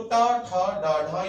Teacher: मूर्धा में टे वर्ग आता है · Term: मूर्धन्य व्यंजन